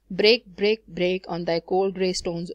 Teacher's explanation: all the words in the first line they are stressed